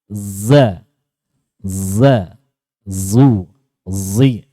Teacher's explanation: Yang tidak punya adalah isti'la dan idbaknya. Jadi kemasukan sifat isti'la dan idbak dari huruf sod. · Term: zai ishmam